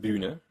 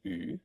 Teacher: There was Ü as in Bühne, a rounded version of I